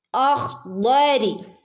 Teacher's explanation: വായ നിറച്ച് പറയേണ്ട, ഉയർത്തി പറയേണ്ട ഒരു ലെറ്ററാണ് ദ്വാദ്. ദ്വാദ്. ഓക്കെ, അഖ്ദരി.